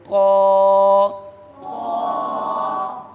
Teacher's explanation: حرف حافیہ ضاد، اس کے آگے ہے طا، یہ بھی حروف نطعیہ میں سے ہے، ٹھیک ہے، یا جو مخرج تا کا تھا وہی طا کا ہے، ٹھیک ہے۔ اور یہ حروف مستعلیہ میں سے بھی ہے، اس کو پر پڑھیں گے